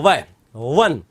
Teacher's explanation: व के उच्चारण में नीचे का होठ और ऊपर के दांत काम में लिए जाते हैं